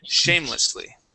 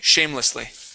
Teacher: our stress is going to be at the very beginning instead of at the end